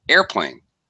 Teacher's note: secondary stress on the second word fully pronounced vowel sounds but the first word will be high air second word plane